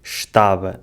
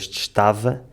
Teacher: In the Northern accents, they swapped the V for a B, “estaba” instead of “estava”, and opened the A's a little more.